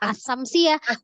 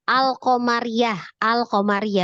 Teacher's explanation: Syamsiah itu yang idgham yang Alif lamnya tidak dibaca tapi yang Qariah yang lamnya dibaca